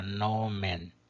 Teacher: também a primeira sílaba é longa por natureza, porque contém uma vogal longa